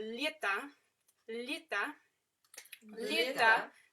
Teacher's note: So it's a soft L, palatalized L.